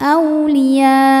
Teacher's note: Mad tabi'inya alif didahului harokat fathah, hamzahnya a, satu kata pada kata aulia. Maka ya-nya dipanjangkan boleh 4, boleh 5 harokat. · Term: mad wajib muttasil